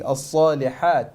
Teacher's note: Make sure that the ha is pronounced clearly. الصالحات, the sad needs to be full mouth